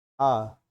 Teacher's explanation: आपका जो मुंह खुलेगा वो हल्का बीच में खुलेगा, तो इसको क्या बोलते हैं, मध्य स्वर।